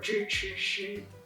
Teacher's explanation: standard Chinese is defined positively. For example, you have to know how to retroflex your zhi, chi, shi